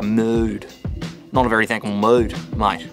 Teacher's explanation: Australians, for some reason, we go up at the end of each sentence and we make things question